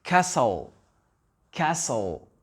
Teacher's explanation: Le T n'est pas prononcé.